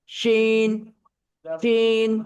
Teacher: শিনটা same জিহ্বার মাঝখান বরাবর তার উপরে তালুর সাথে, শিন শিন, শিন এটা মোটা হবে।